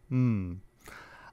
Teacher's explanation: The first place of articulation is bilabial. These are sounds made with both lips, such as the bilabial plosives p and b, and the bilabial nasal m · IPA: [m]